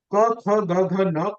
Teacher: come from the back of the throat